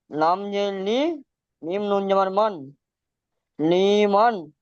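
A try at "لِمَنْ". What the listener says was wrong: লিটান হবে না লিমান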